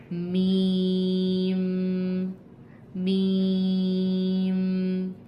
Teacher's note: दोनों होठों के सूखे हिस्से को टच करने से यानी कि आउटर साइड को, लिप्स के आउटर साइड को जब हम आपस में प्रेस करेंगे तो मीम की आवाज़ निकलेगी